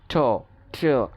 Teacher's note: এয়ার ফ্লোটাকে আটকে দিচ্ছি আলভিওলার রিজের মাধ্যমে